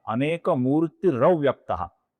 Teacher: अनेक मूर्ति का जो विसर्ग है उसके आगे अव्यक्त का अ आने के पश्चात वहां पर अपूर्ण र बनता है जो आगे वाले अ में मिल जाता है